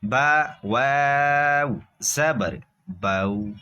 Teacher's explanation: بغیر کھینچے بغیر جھٹکا دیے نرمی سے معروف پڑھیں گے، بغیر کھینچے بغیر جھٹکا دیے نرمی سے معروف پڑھیں گے حروف لین کو۔